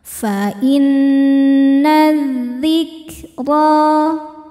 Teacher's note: Selanjutnya ada alif lam syamsiyah sebab alif lam menghadapi huruf syamsiyah yaitu dzal. Cara bacanya alif lam lewatin, gak perlu dibaca, masukkan langsung ke dzal atau diidghamkan, idgham syamsi.